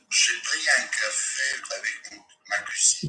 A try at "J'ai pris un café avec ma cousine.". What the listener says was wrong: Go again. I don't want the breath to stop. Smaller mouth, smaller mouth, smaller mouth, smaller mouth. J'ai pris un café avec ma cousine. J'ai pris